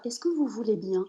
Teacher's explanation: la plupart des femmes vont garder ce point d'interrogation dans la voix